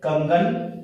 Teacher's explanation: शब्द है कंगन, तो क वर्ण पर अनुस्वार लगा हुआ है और उसके बाद हम ये देखते हैं कि अगला जो व्यंजन वर्ण है वो किस वर्ग का है, वो है क वर्ग का, क्योंकि यहां पर क वर्ग में ग आ रहा है, तो क के बाद में इसका पंचमा जो अक्षर है अंग, ये इसके उपयोग में आएगा उच्चारण में